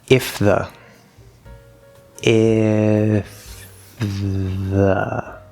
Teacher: flows pretty well but no connection we hear the f we hear the th